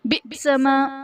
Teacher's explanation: حمزہ ساکنہ ہے جھٹکا دے کر پڑھیں گے